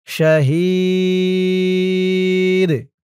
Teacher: ওয়াকফ করার কারণে জেরের পরে ইয়া সাকিন এক আলিফ টান ৩ আলিফ টান হয়ে গেছে এবং এই দালটা কলকলার হরফ হয়ে গেছে